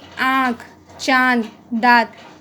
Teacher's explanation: अनुनासिक का उच्चारण नाक और मुख की सहायता से होता है